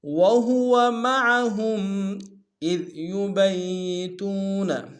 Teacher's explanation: واو ہا اور اگلے واو کو نون سے ادا کریں گے، عین کو گہرائی سے ادا کریں گے ، وہو معہم اذ یبیتون، اذ ذال کو باریک ادا کریں